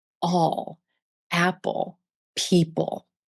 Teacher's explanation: the dark L, or the final L, which you hear at the end of words and syllables, as in all, apple, people.